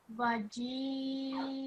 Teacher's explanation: You've prolonged the mad kabir, you've prolonged it, extra elongation you gave it, and you've ignored the alif and you just prolonged the jim with that mad.